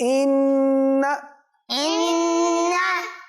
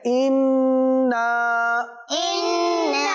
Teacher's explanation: इन्ना बगैर खींचे, इन्ना एक अलीफ तक खींच के पढ़ रहे हैं